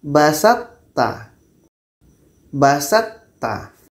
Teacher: Jadi nanti ketika sebut to ini, sifat itbaq yang ada pada to ini masih terbawa kepada ta. Maka disebut dengan idgham nakish.